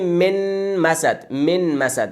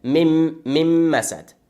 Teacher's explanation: آسان ما نون به حرف مم داخل میکنیم که آسان تلفظ شو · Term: ادغام